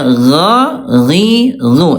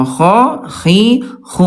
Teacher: huruf ghain, Bunda sekalian, sifat hurufnya ya dia jahar, tidak ada udara. Ya, kalau kha dia alhams ada udara. Ya, gha, ghi, ghu tidak ada udara.